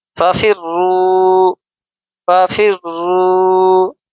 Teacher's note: فا، را زر فر، ففر، را واو پیش رو، ففر رو، را مشددہ ہے یعنی را کے اوپر تشدید ہے، اس کو ہم زور دے کر سختی کے ساتھ ہم ادا کریں گے